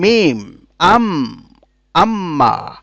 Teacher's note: মিম উচ্চারিত হয় ঠোঁটের বাইরের শুকনো অংশ থেকে। এই যে যে ঠোঁটগুলা, ঠোঁটের যে অংশটুকু শুকনো থাকে, এই শুকনো অংশ থেকে উচ্চারণ করো মিম।